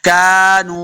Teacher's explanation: اس کاف کو موٹا نہیں کرنا، نون پیش واو، نو واو مدہ اس کو دو حرکات لمح کریں گے.